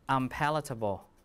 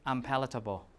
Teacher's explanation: when you have a P, it should be an M, right, to match the place of articulation